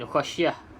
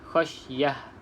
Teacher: Kalau kita berhenti, kita kena bunyikan ta ni sebagai ha.